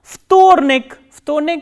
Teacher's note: And as you can see here, there is again voiced and voiceless consonant coming together. V and T. That is why V is pronounced as F.